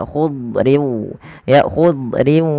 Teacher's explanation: Padahal huruf dot tidak punya sifat qalqalah, tapi dia punya sifat yang pertama isti'la, yaitu pangkal lidah terangkat dan dia menebal · huruf Dad itu tidak boleh terpantulkan